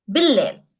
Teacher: Bil-layl, bi plus il, definite article plus layl. Bil-layl. It assimilates altogether.